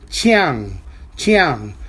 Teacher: Chang is a third tone character that is to say it's a falling tone and Rising tone